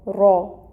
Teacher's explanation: را کو پر بھی پڑھیں گے اور 1 کاؤنٹ ہوگا۔ موٹا کر کے پڑھیں گے، را۔ پھر را کو ہم نے با کے ساتھ ملانا ہے، ٹائٹلی جوائن کرنا ہے، ٹائم ٹیکنگ ہوگا۔